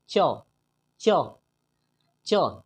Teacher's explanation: जब आप च बोलते हैं तो हमारा जुबान उस तालु में टच करता है। च, च, च तालु में टच करता है, तो हम कह सकते हैं च का उच्चारण स्थान तालु है, चूंकि हमारा जुबान तालु में टच करता है। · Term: चवर्ग